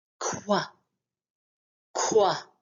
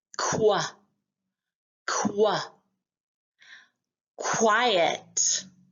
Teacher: back of our tongue, our throat, and rounded lips.